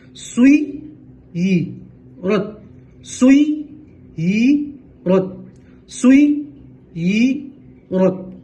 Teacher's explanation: سوئی ی رت سوئی ی، یا دو مرتبہ پڑھیں گے، سوئی، سین کو یا جھٹکے سے ملیں گے تو یا اچھے سے ادا ہوگی